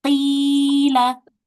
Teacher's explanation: huruf qof berharakat kasrah kemudian bertemu dengan ya sukun maka huruf qofnya dibaca panjang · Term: huruf mad